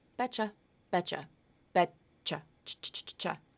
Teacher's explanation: A final T to a Y consonant gives you the CH sound.